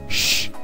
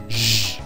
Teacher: ela é uma palatal constritiva, fricativa, surda, porque nós não usamos a nossa corda vocal